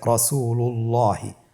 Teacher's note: এখানে দ্বিতীয় উদাহরণটিতে লাম মোটা রয়েছে রাসূলুল্লাহি